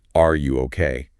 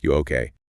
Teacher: native speakers just take the word are and drop it. They just drop it completely.